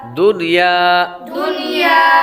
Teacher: یہاں پر غنہ نہیں کریں گے کیونکہ نون ساکن کے بعد یا حروف یرملون میں سے اسی کلمے میں آ رہی ہے، ایک کلمے میں آ رہی ہے، تو اس وجہ سے یہاں پر غنہ نہیں کریں گے۔ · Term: اظہار مطلق